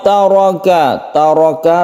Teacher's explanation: ro yang berfathah itu membacanya tafkhim atau ditebalkan